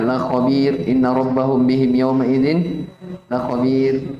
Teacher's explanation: Jadi kalau ada ro didahului oleh ya sukun, dia dibaca tipis.